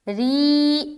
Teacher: را کو اس نے موٹا کر دیا، جبکہ یہاں پر قاعدے کے مطابق را کو باریک رہنا ہے